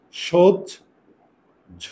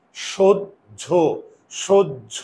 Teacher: দুইটা উকার হয়েছে। কারণ কি? আমার মুখের চোয়াল খুলে না। সহ্য, সহ্য, মুখের চোয়াল যদি না খুলে তাহলে উকার।